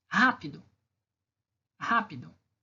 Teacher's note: Rá é a sílaba mais forte.